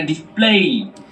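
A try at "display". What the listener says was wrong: না ডিসপ্লে বলে মানে এটা দীর্ঘস্বর দিবা না এটা মানে জাস্ট একেবারে নর্মালি বলবা না ডিসপ্লে ডিসপ্লে হ্যাঁ এরকম ডিসপ্লে দেখো মানে দুটো শব্দ বলছি একটু খেয়াল করো এটা হলো ডিসপ্লে বললাম ভালোভাবে খেয়াল করো ডিসপ্লে আরটা বললাম ডিসপ্লে টান দেবো না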